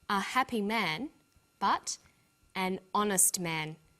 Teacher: the h is not pronounced so honest sounds like it starts with a vowel